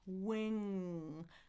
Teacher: Feel the back of your tongue lifting, right? And then it's a nasal too.